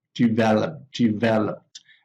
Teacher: the stress of the verb is on the second syllable